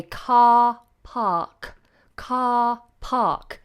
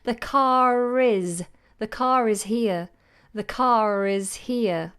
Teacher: ends with an R it's a consonant so this rule applies the following letter is a consonant so therefore R is going to be silenced